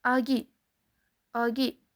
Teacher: Unlilar o'rtasida kelganda esa G deb talaffuz qilinadi.